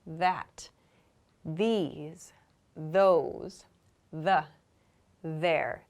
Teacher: so this my throat vibrates that these those the there so these should all make a vibrating or a vibration rather in your throat when you make the sound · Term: voiced th sounds